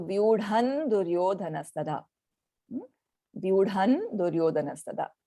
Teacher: the anuswara will take on the sound of the 5th letter, the panchamakshar of the da varga